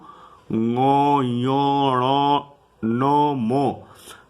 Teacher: नाक की सहायता से मुख से उच्चारित होने वाला ऐसे वर्ण अनुनासिक कहलाते हैं